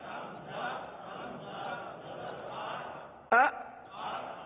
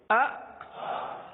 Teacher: یہ جھٹکا ہے, یعنی آپ ایک دم سے آواز کو روک لیں